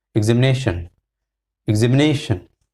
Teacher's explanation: Ne has got more stress, so ne has got the primary stress.